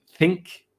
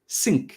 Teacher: instead of saying think people say sync so they say like an s sound instead